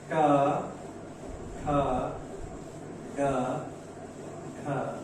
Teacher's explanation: मूर्धा की सहायता से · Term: मूर्धन्य